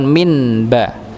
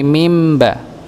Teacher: Ya, yakhruju mim ba, bukan min ba tapi mim ba. Ya, yang awalnya nun dibaca sebagai mim. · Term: iqlab